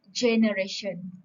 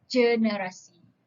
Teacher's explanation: Ialah sebutannya sahaja yang diubah. Contohnya, kalau G di dalam bahasa Inggeris kita akan menyebutnya sebagai J, iaitu generation. Tetapi bila dibawa kepada bahasa Melayu, G tersebut akan disebut sebagai G, iaitu generasi.